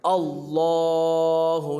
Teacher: लफ्ज़ अल्लाह के लाम से पहले अगर ज़बर हो तो लफ्ज़ अल्लाह का लाम पूर होगा